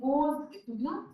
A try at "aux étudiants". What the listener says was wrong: Voilà, j'ai enseigné aux étudiants. Oui, aux étudiants. Not the plural sound, aux étudiants.